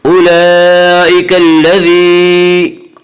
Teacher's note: یا مدہ کو 1 الف کی مقدار کھینچ کر پڑھیں گے